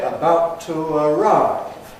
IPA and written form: əˈbaʊt tu əˈraɪv (about to arrive)